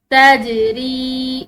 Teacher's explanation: جیم حروف قلقلہ میں سے ہے تو اس کو ہلاتے ہوئے ادا کریں گے۔ تجری، را کے بعد یا ساکن آ رہا ہے تو اس کی وجہ سے اس کو ایک الف کی مقدار لمبا پڑھیں گے۔